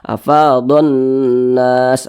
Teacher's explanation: Karena dia cara membaca huruf lamnya itu diidghamkan. Jadi huruf lamnya ini dia tidak dibaca. Makanya di sini tidak ada tanda bacanya kan, langsung masuk di huruf di depannya begitu. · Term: alif lam syamsiyah